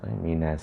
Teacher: Nas jangan minos, minas. Sad yang tebal, na ni nipis.